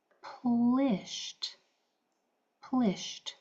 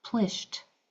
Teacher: So, this side is going to say I because of those two consonants. E d after a voiceless sound like an sh is going to make its voiceless sound and sound like a t.